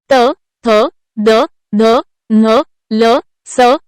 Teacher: त थ द ध न ल स या 7 व्यंजनांचा उच्चार करताना जिभेचे टोक वरच्या दातांना स्पर्श करते म्हणून त्यांना दंत्यवर्ण असे म्हणतात.